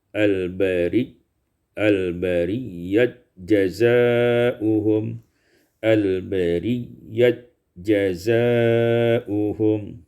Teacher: Pada ayat yang ketujuh dan kedelapan, al-bariyah idgham ta fil jim, diidghamkan ta pada jim menjadi al-bariyat jazaa'uhum, al-bariyat jazaa'uhum.